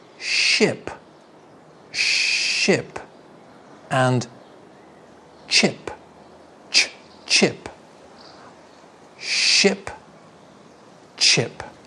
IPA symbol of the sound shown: ʃ